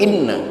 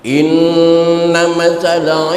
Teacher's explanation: tasdid yang ada di atas huruf nun harus ditahan selama 1 alif atau 2 harokat. Itu hukumnya gunnah musyaddadah.